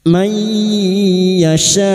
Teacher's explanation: masuk dengan mendengung masuk pada huruf ya dan mendengung selama tiga harakat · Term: idgham biguna